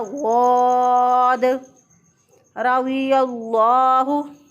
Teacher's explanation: वाद जो है ये भी मोटे हरूफ में से है, रा भी मोटा पढ़ा जाएगा, वाद भी मोटा पढ़ा जाएगा। और वाद जो है इसकी अदायगी में ज़ुबान की करवट ऊपर की दाढ़ों के साथ लगेगी तो वाद अदा होगा वाद रज़ियल्लाहु।